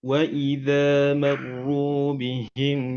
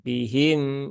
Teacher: mimnya dialirkan sedikit Pak karena mimnya itu sifatnya tawasut ya bukan syidah